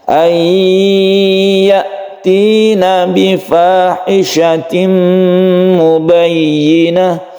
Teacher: Huruf ya ini apabila sebelumnya ada nun, maka suara nun ini sudah melebur kepada ya. Masuk, idgham artinya masuk, masuk ke huruf ya. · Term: idgam bighhunah, idgham bi gunnah